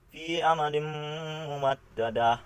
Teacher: Contoh yang kedua, fi amadim mumaddadah. Di sini tanwin bertemu dengan salah satu huruf idgham bigunah, yaitu mim, sehingga dibaca menjadi dengung